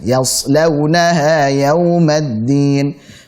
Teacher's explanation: Yas tipiskan ya-nya, sad tebalkan lau, la tipiskan.